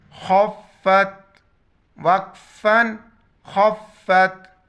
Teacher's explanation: خا موٹا پڑھا جائے گا، بالکل گلے سے ادا کرنا ہے۔ خوف زبر خف، فا تا زبر فت، خفت، وقفاً خفت۔